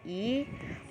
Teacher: Nama-nama fonem vokal yang ada dalam bahasa Indonesia adalah yang pertama ada I, vokal depan tinggi tak bundar